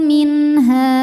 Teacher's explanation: Yakhruju minha, min ada hukum izhar halqi karena ada nun sukun menghadapi huruf halqi yaitu ha, maka nun sukun dibaca jelas